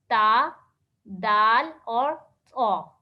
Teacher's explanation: زبان کی نوک جب ثنایا علیہ سامنے والے 2 دانتوں کی جڑ سے یعنی اندر کی طرف لگے گی تو اس سے 3 حروف ادا ہوں گے, تا, دال اور طا. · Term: حروف نطعیہ